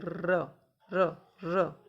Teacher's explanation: जिन व्यंजनों के उच्चारण में जिह्वा को 2-3 बार कंपन करना पड़ता है वे प्रकंपित कहलाते हैं। जैसे र, जब हम र बोलते हैं तो हमारी जीभ कैसे करती है, जैसे प्रकंपित करती है, र र र ऐसे।